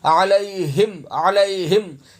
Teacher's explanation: غلط ہے، عین پڑھنا، عین زبر عا حلق سے ادا ہوگا، ہا سینے سے ادا ہوگا